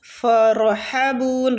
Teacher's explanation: را جو ہے اس کو پور پڑھنا ہے کیونکہ پیچھے والے حروف کے اوپر زبر ہے ٹھیک ہے، مطلب فتح۔